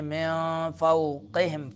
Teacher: میم نون ساکن، اس سے ما بعد حروف اخفا میں سے فا آ رہا ہے، تو نون کو ناک میں چھپائیں گے، اخفا کریں گے